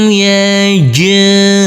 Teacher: huruf jim yang bersukun ini harus kita pantulkan karena ini adalah bacaan qalqalah.